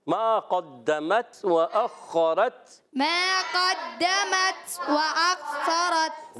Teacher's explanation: ما ایک الف کھینچنا ہے، قاف کو پر رکھنا ہے، دال مشدد ذرا رک کر ادا کریں گے